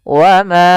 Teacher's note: Mad panjang jaiz boleh, munfasil adalah terpisah, yang dimaksudkan hamzahnya terpisah daripada atau di lain kata, sehingga ma kita panjangkan dulu 4 harokat atau 5 harokat untuk kadar mad jaiz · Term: mad jaiz munfasil